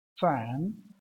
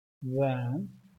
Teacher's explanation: F is voiceless sound and V is voiced sound.